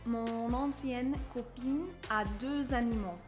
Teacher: You're going to see a liaison between mon and ancienne because you have the possessive mon followed by an adjective that starts with a vowel.